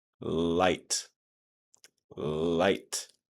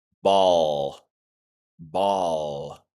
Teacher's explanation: The light L starts at the beginning and it's a bit shorter of a sound, whereas the dark L is a bit longer and a bit more pronounced